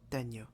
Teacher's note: a palatal nasal, which is the same as ñ in Spanish. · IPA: ɲ